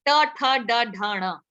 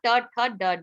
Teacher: रेट्रोफ्लेक्स, ट ठ ड ढ ण, सारे साउंड्स रेट्रोफ्लेक्स हो गए। जीभ आपकी कर्ल होके पीछे गई, ऊपर टच किया